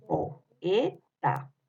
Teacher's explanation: Tiene dos vocales abiertas, como es en el caso de la O y la E. En este caso se están separando en diferentes sílabas.